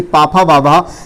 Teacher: और ताथा दाधा जो है ये दंत से बोले जाते हैं, जबकि पाफा बाभा ये ओष्ठ से बोले जाते हैं, जिसको हम ओष्ठ व्यंजन कहते हैं